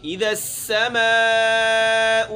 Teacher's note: آگے سین سختی ہے، اس میں سیٹی نکالنی ہے